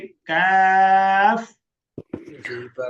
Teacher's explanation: জিহ্বার গোড়া থেকে একটু আগে বাড়াইয়া তার বরাবর উপরে তালুর সঙ্গে লাগাইয়া পাতি কাকের মতো পাতলা আওয়াজে